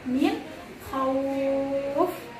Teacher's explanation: min Khauf itu dibacanya 4 harokat juga. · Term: mad lain